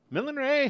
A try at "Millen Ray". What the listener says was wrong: More emphasis on the Len.